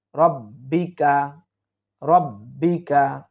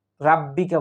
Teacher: এই শব্দটি আমরা অনেকেই উচ্চারণ করতে গিয়ে আমরা বড় ধরনের একটা ভুল করে থাকি, অর্থাৎ রব্বিকার জায়গায় আমরা রাব্বিকা বলে ফেলি